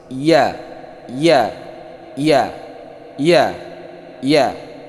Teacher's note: keluarnya di tengah lidah dengan langit-langit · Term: huruf ya